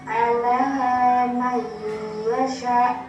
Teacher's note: Dalam penulisan lafal ala man yasha, tetapi ketika nun sukun bertemu dengan huruf ya harusnya dimasukkan ke dalam huruf ya. Maka huruf ya seperti ditasydidkan. Ya, ini ala mayyasha ditekan selama 2 harakat. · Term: idgham guna